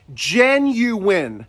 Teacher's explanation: has three syllables the stress is on the first syllable and there's a hidden W right between the U and the I and we say it as Jen you win bring your lips forward on that W